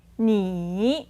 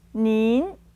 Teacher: You have one third tone, you normal. and a second tone for the more polite version, and together with an ennn sound in the end.